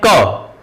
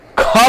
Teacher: ठीक, देखिए जब हम इनको बोलते हैं, इन व्यंजन वर्णों को बोलते हैं, तो जब अल्प करते हैं, जब अल्प में अल्प का मतलब थोड़ा वायु, जब हम क बोलते हैं क, तो मुख से कम वायु निकलता है। ख बोलते हैं तो ज्यादा वायु निकलता है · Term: अल्प प्राण